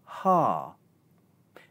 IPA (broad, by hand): hɑː